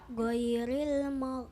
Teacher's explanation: Kesannya seperti ada huruf qaf atau ka. Ghairil mag, dia terasa di tengah-tengah tenggorokan. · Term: huruf ghain